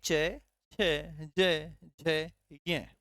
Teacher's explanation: च वर्ग का स्पर्श कहां होता है तालू के पास होता है